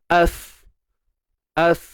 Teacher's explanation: Pangkal lidah tak naik. Istifal. Pangkal lidah merendah.